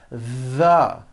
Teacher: they should all be voiced and all made with your tongue coming through your teeth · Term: voiced th